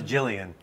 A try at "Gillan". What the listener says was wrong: Gillan. No. I think it's Gillan. I don't think it's a soft G.